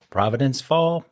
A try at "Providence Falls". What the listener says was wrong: Providence Falls. It sounded like you said fall.